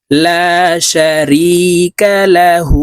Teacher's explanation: হার উপরে উল্টা পেশ আছে তাই এই হাকে এক আলিফ টাইনে পড়তে হবে ঠোঁট গোল করে এক আলিফ টেনে পড়তে হবে